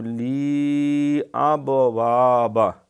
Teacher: اب یہ با کے اوپر کلکلہ ہے، یہ صفت اس کی لازمی ہے کلکلہ با کی۔